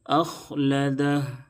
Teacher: وقف کریں گے تو ہا ساکن ہو جائے گی